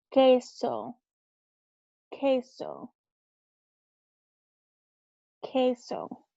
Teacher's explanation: The QU sound in Spanish makes a K sound, not a qua sound. In English, it makes like a KW sound, a qua, but in Spanish, it just makes a K sound.